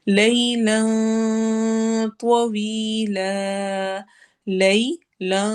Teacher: جو لام ہے اس میں اخفا ہو رہا ہے اور ہم اس کو تھوڑا موٹا کر کے کریں گے کیونکہ آگے موٹا حرف آ رہا ہے